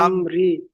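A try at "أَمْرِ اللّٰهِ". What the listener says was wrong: র লাম জের, র লাম একসাথে হবে। রিল।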